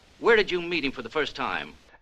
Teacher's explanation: we can use a flap T and then link that soft D sound with the vowel sound in him